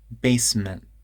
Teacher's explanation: there's a glottal stop instead of a t